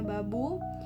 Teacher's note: Beh, bunyi lepas diikuti vokal